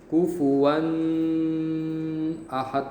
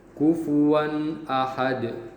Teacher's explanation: kufuwan tanwin itu benar-benar dibaca n jelas bunyi energi jelas kufuwan dan dia tidak ada panjangnya atau gunanya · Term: izhar halqi